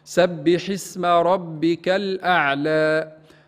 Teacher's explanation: تفخيم الراء لأنها متحركة بالفتح. كلمة الأعلى هنا مد طبيعي، ما نزيدوش في طول المد، لا نقول الأعلى كما نسمع من بعض المبتدئين أو من بعض الإخوة.